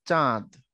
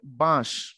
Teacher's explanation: যখন আমি উপরে চন্দ্রবিন্দু দিব তখন নাসিক্য ধ্বনি হয়ে যাবে এটা নাকের প্রভাব পড়বে